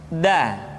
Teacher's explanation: Selanjutnya pengucapan huruf da. Da diucapkan dengan menyentuhkan ujung lidah kita dengan bagian gusi-gusi dua gigi seri bagian atas. Da. Nah, kesalahan yang sering dilakukan adalah menyentuhkan ujung lidah dengan langit-langit.